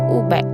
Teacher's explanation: Belakang lidah diangkat hampir ke arah lelangit lembut. Hujung lidah diundurkan dari gigi bawah. Langit lembut dinaikkan. Keadaan bibir bundar. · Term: vokal belakang sempit